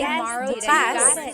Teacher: Homonym means it has more than one meaning, depending on the context or depending on the pronunciation. If you say bukas, the emphasis is on the second syllable. Bukas is tomorrow. If you say bukas, means open.